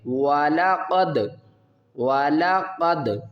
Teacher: قاف کو پر پڑھیں گے، دال کے ساتھ ملائیں گے، دال کے اوپر قلقلہ کریں گے